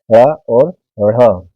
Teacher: किंतु फर्क सिर्फ इतना है कि ड़ और ढ़ को उच्चारण करने में जीवा ऊपर जाकर झटके से नीचे आती है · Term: द्विगुण व्यंजन